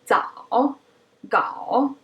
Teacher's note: Some people even pronounce it with a glottal stop. 早 gao. The voice kind of breaks at the lowest point. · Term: third tone